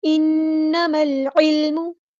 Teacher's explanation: انما العلم ان نون پہ غنہ زمانی ہو رہا ہے، کلمہ پہ برابر رکیں گے.